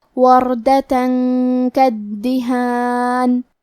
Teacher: کاف حروف الاخفاء میں سے ہے، تو ہم یہ حکم کو غنہ کے ساتھ ادا کریں گے